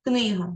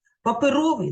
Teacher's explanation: в українській мові наголос Як ви знаєте вільний книга у першому складі високий на другому паперовий на третьому тобто наголос може бути на будь-якому складі він рухомий думка думки